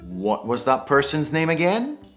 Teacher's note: When we use again at the end of a sentence, it's very common to have rising intonation.